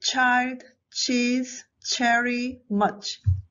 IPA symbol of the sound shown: tʃ